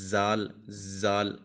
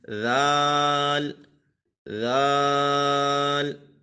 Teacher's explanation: زبان کا سرا اور اوپر کے دانتوں کے اندرونی کنارے سے ادا ہوتا ہے، اب دانتوں کے اندرونی کنارے پر زبان کا سرا لگائیں گے تو یہاں پہ ذال ادا ہوگا اور یہاں پہ بھی سی ٹی کی آواز نہیں آئے گی، اگر کوئی اس کو پڑھے زال، زال تو یہ غلط ہو جائے گا، اس میں سیٹی کی آواز بالکل بھی نہیں آنی ہے.